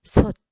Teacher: 그 다음에 꽃도 꽃. 그 다음에 솥도 티읕을 쓰지만 소리 날 때는 어말에서는 디귿소리로 바뀌죠.